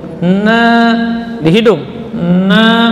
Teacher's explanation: jadi bergetarnya hidung, itu tanda huruf itu keluar dari apa? Dari khayshum, rongga hidung. Panjang juga 2 harakat nunnya, na, tipis, ya.